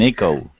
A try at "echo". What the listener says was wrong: It's a short I, not a long E.